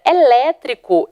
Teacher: eu também tenho o assento na anti penúltima sílaba então eu também tenho uma proparoxítona